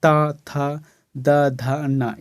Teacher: जीभ जो है ऊपर वाले दांत को अंदर से टच करता है, यही तो है ना जो है दंतव्य व्यंजन, तो इसी को कहा जाता है।